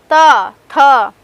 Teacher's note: जब हम त थ द ध न का उच्चारण करते हैं तो हमारी जो जीभ है वो उच्चारण करते हुए टाइम दांतों पे टच होती है